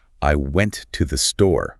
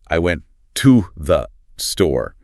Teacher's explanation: The words to and 'the' become really weak. Almost like little blips of sound to the. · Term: unstressed